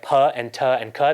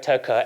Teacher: The consonants that you can stick at the end of a word are not all equal in their ability to stop sound. There are some called stop consonants, like p and t and k, that really do just stop the sound coming out of your mouth.